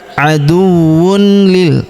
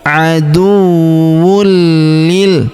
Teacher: langsung melebur masuk ke huruf li, menghilang ya. Melebur ke huruf li, kita tahan dan tekan.